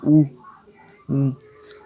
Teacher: होट क्या बनेगा वृत्त की तरह गोल बनेगा वृत्त की तरह गोल बनेगा ऐसे बनेगा लेकिन आप ई बोलेंगे